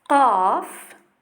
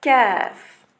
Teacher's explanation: Donc, regardez bien que le son qaf, la langue va appuyer bien plus profondément au fond de la bouche, alors que kaf s'appuie légèrement vers le devant du fond du palais. Donc, le qaf a un son un peu plus éloigné et profond près de la gorge, près de l'entrée de la gorge, alors que kaf va être en avant